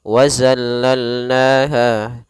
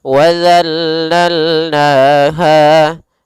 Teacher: Di sini kesalahan yang sering terjadi mengganti dengan huruf zai, misalnya wazallalnaha, padahal dia harusnya adalah huruf zal, yang mana makhrajnya kita keluarkan daripada ujung lidah menempel dengan gigi seri atas, za, sehingga sempurna daripada makhraj dan sifat huruf zalnya.